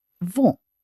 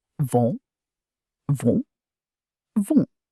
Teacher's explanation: The N at the end of the word is not fully pronounced. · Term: nasal vowel